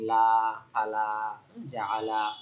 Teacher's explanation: স্বাভাবিকভাবে লামের উচ্চারণটা পাতলা হয়, লা হয়।